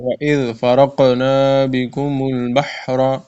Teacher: وَإِذْ میں ذال نرمی سے پڑھنا ہے، اور فرقنا میں قاف میں قلقلہ کرنا ہے.